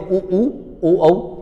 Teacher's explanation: आकृतिक आधार पर दो होते हैं अव्रत मुखी और वृत्त मुखी वृत्त मुखी जहां आपके होट गोल होते हैं